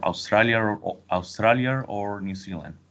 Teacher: I think maybe there can be an intrusive R